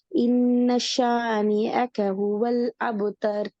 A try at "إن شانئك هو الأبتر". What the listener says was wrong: இல்லை, நேரத்தில் பிள்ளை வருது. ஷீனுக்கு நீங்க சத்து வச்சு ஓதுறீங்க. பிள்ளை இன்னஷானி அக்க. அப்ப இதுல யா சவுண்ட் தான் வருது, ஏட உச்சரிப்பு வருது. இல்ல ரெண்டாவது அடுத்த மிஸ்டேக் பாத்தீங்களா? இன்னஷானி அக்க யக்கன்னு தான் வருது. எஸ், அக்க சவுண்ட் வரணும்.